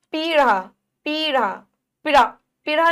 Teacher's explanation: पी की ई की मात्रा को हम थोड़ा सा खींच के बोल रहे हैं। तो कौन सी मात्रा आएगी, बड़ी मात्रा।